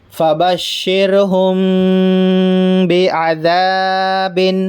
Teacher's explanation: یہ غنّے کے ساتھ اخفا کر رہے ہیں ہم. عین زبر آ، ذال الف زبر ذا، با دو زیر بن، بعذاب، فبشرہم بعذاب. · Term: اخفاء شفوی